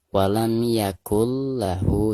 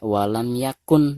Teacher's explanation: maka cara membaca nun sukun di sini itu harus diidghamkan langsung ke huruf lamnya ya. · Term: idgham bila gunah